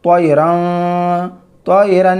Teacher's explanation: حمزہ حروف حلقی میں سے ہے، تو اب یہاں پہ تنوین کو توئرن، توئرن گنہ بھی نہیں کرنا، اخفا بھی نہیں کرنا، بلکہ نون کی آواز کو ظاہر کر کے، تنوین کی آواز کو ظاہر کر کے بلا غنہ کے جلد پڑھیں گے۔ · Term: اظہار